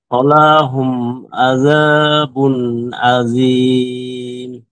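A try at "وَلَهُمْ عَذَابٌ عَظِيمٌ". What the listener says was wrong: ওয়ালাহুম একটু টান হয়ে যায়, লামে টান দেওয়া যাবে না।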